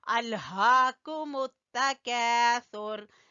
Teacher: الہاکم التکاثر، لام کے اوپر قلقلہ بالکل نہیں کرنا، ال نہیں پڑھنا، ال ادھر ہی آپ کی زبان ٹک جائے۔ الہا، ہا کو آپ نے گلے کے آخری حصے سے نکالنا ہے